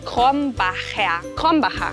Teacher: La primera R gutural, la CH como una J y la R al final como una A.